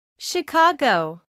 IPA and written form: ʃəˈkɑːɡəʊ (Chicago)